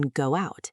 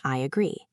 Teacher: >> We learned about intrusion, the invisible W in go out and the J in I agree